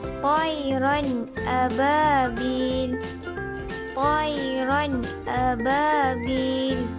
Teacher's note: Tanwin iaitu dua baris di atas bertemu dengan huruf hamzah, maka ia dibaca jelas